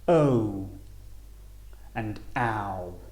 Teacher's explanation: each sound ends with a u sound